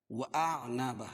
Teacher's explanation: حمزہ اور عین دونوں کو الگ الگ کی پڑھیں گے اور عین کو بھی نکال کے پڑھیں گے